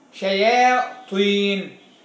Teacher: الياء مرققة، ما تقولش يا، لا، الياء مرققة، لابد تبتسم وأنت تقولها